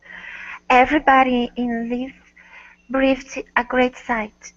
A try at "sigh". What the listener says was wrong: Not sight, but sigh. A great sigh.